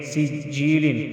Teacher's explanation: سین جیم زیر سج، جیم یا زیر جی، لام دو زیر لن، سجیل. جیل یا مدہ ایک الف کے برابر کھینچ کر پڑھیں گے